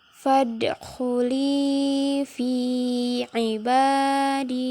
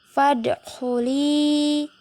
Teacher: Bacanya dipantulkan, huruf dal itu adalah huruf qalqalah. Fadkhuli. Li bacanya dipanjangkan 2 harokat.